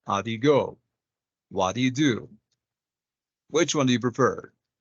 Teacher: so it's not rising, it's falling intonation.